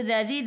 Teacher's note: hujung lidah keluar pada gigi depan. 3 harakat ada ya mad asli.